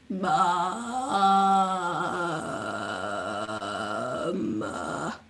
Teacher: allowing our voice to fry in the back of our throat. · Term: vocal fry